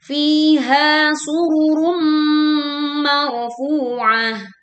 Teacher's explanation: Fu mar, ro sukun didahului oleh fathah sehingga dibaca tebal, marfu, funya panjangnya dua harakat, marfuah. Ta marbuth dibaca waqaf menjadi ha sukun